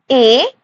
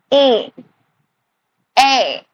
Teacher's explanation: ए हमारा एक कंठ से भी हो रहा है, ऊपर जीवा भी टच हो रहा है तालु में। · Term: कंठ तालव्य वर्णा